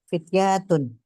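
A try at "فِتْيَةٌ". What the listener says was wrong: pendek ya, pendek ya. Fityatun.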